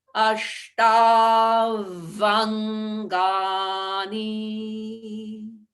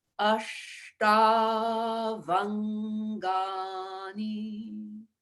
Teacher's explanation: There's a sandhi or a blending between ashtau and angani. So ashtau angani will change to ashtavangani.